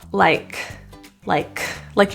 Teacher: the K pronunciation at the end of this word is released it's not aspirated not but released so if you find that you do a